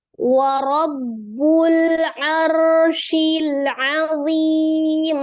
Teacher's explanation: Wa rabbul, nah ada alif lam qamariyah, izhar qamari, arsyil ada ra sukun sebelumnya berharokat fathah di huruf ain, maka ra-nya dibaca dengan tebal ya, tafkhim.